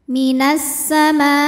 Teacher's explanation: maka mimnya dipanjangkan boleh empat boleh lima harakat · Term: mad wajib muttasil